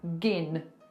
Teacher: part of that sound is gin you've you've put the G in front of the next word it's one sound